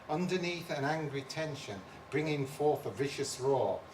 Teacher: That part is trochaic tetrameter, 4 pairs of syllables per line with the stress on the first syllable in each pair